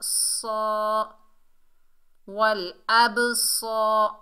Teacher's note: सौद रूफे इस्ताला में से है, मोटा अदा होगा। सौ, वल अब सौ, रा के ऊपर ज़बर, बगैर खींचे पढ़ेंगे। · सौद के ऊपर खड़ा ज़बर है, एक अलिफ की मिकदार खींच कर पढ़ेंगे। सौद रूफे इस्ताला में से है, मोटा अदा होगा।